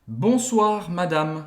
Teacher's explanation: esse E no final ele é tão discreto que a gente quase não escuta